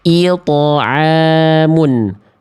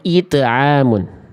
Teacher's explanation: To termasuk ke dalam huruf yang tafkhim, dibaca dengan suara yang tebal. Maka tebalnya ini jangan sampai tidak ada ketika qalqalah.